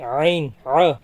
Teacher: जैसे जाल जबर ज पढ़ेंगे लेकिन ज जबर व पढ़ेंगे आईन ये हल्क के बीच वाले हिस्से से अदा होता है